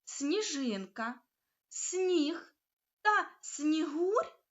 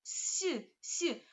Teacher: у словах сніжинка сніг та снігур пом'якшення звука с перед м'яким нь що закріплюється у вимові але не відображається на письмі тому перший приголосний звук у цих словах Слід вимовяти ляти м'яко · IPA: [с’]